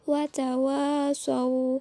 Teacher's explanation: Yang ke-14 adalah mad lin, karena huruf waw sukun didahului oleh huruf shad yang berharakat fathah, jadi panjangnya 2 harokat